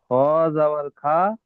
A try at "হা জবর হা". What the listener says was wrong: খ নয়, খ নোক্তা থাকে, এখানে নোক্তা নেই, হা হবে। হা জবর হা।